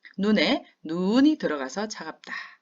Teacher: 눈은 우리 눈이잖아요. 요거는 짧게 발음하고 하늘에서 내리는 눈은 길게 발음해야죠. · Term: 소리의 길이